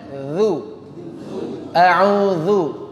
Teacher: Dhal caranya dikeluarkan sedikit lidahnya. Gesek.